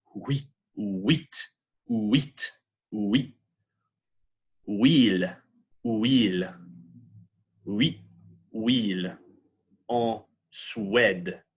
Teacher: this is like an U that kind of turns into a W as you get to the end of it. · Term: semi-vowel